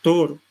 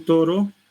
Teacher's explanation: la punta de la lengua entra en contacto con los dientes, es dental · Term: sonido dental